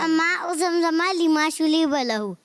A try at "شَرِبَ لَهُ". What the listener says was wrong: یہ شلیبا ہو گیا یہ تو. شریبا.